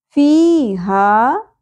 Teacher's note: یا ساکن سے پہلے زیر اور الف حرف مدہ، دونوں حرف مدہ ہیں، اس لیے ایک ایک الف کے برابر کھینچا جائے گا